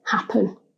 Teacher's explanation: when we say the word out loud the stress is on the first syllable